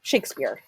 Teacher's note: Now, when you say the name Shakespeare, your voice kind of raises an inflection a little bit. It's a little bit louder, it's a little bit longer on the shakes. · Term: stressed syllable